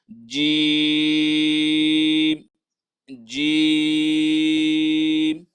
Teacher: جیم به د درې الف مقدار راکاږو